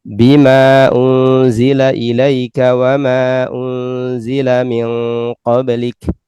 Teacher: ada huruf mad kemudian ada hamzah ya setelahnya ya, di lafadz yang berbeda, maka dibaca hanya qasar, yaitu dua harokat